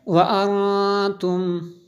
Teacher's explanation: وانتم، نون ساکن ہے اس لیے یہاں پہ نون ساکن کے بعد تا حروف اخفا میں سے ہے، اس لیے یہاں پہ غنہ ہوا